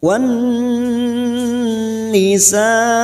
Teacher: huruf nun yang bertasdid, ditahan selama 3 harokat, kita dengungkan.